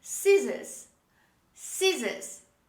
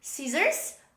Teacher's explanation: So in British pronunciation, we don't pronounce the letter R, but in American pronunciation, we pronounce the letter R. So in American pronunciation, we say scissors, but in British English, we say scissors.